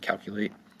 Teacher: Calculate has 3 syllables. Calculate, the first syllable is going to be accented